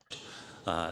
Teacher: I like how he's using uh as a thinking sound. And you can hear it's resonating is vibrating in the chest.